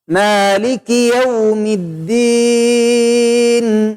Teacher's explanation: Perhatikan gunnah pada akhirnya, ada gunnah sedikit.